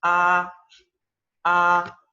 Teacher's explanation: agudo y sostenido verdad arriba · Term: primer tono